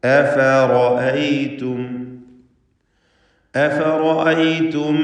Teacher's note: റാഇന് മാത്രം തഫ്ഖീം കൊടുക്കുക